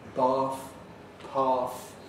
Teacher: the voiceless dental fricative of bath path